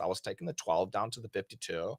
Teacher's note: There's a lot of vocal fry, but they actually really did talk like this.